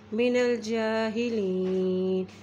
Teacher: जीम के ऊपर खड़ी ज़बर है, एक हरकत लंबा करेंगे